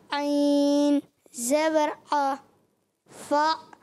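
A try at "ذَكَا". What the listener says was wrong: فاعل کیسے بن گیا؟ عین نہیں پڑھیں گے یہاں پر, ذکا.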